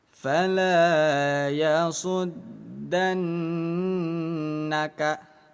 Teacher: Nun yang bertasydid kita tahan 2 ketukan, dengung.